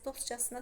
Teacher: Dostcasına sözündə casına şəkilçisinə vurğu düşə bilməz.